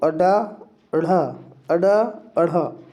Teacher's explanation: अडा अढ़ा, अडा अढ़ा, ये दोनों कैसे हैं? उत्क्षिप्त व्यंजन, इन्हें द्विगुण व्यंजन भी कहते हैं